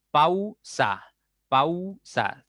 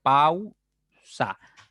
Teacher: ¿Te das cuenta que al pronunciar la U ya se cierra un poco más tu boca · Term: diptongo decreciente